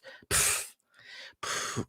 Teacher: pff is a sound that you make blowing out your lips